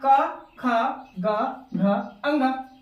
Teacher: क, ख, ग, घ, अंग, जीव हवा में ही लटकता रह जाता है और आवाज अंदर से आती है, दैट मीन्स कंठ से आवाज आती है। इसीलिए क, ख, ग, घ, अंग का उच्चारण स्थान हो जाएगा हमारा कंठ। क्या हो जाएगा, कंठ, यानी कंठ से हवा निकलती है।